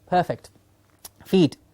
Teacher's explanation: we have a clear long E in feet